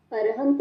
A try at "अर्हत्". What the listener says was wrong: अर्हंत नहीं है, अर्हत।